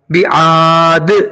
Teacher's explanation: ہم نے یہاں پہ دال کو ساکن کر کے کلکلا کیا